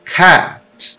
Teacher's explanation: do que o e é um som mais aberto e relaxado é uma mistura de e com o som do a do português ele não é o a mas ele é um a com um e · Você vai abrir a boca com um A e falar E. Cat. É diferente de cat. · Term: A, curto